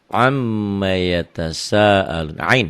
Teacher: Mimnya bertasydid jadi gunnah.